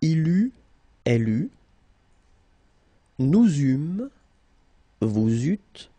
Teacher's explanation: You don't pronounce it like normally we would pronounce it E, okay, but we will pronounce it U all the time.